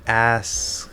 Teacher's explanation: there's that K. I'm not closing it completely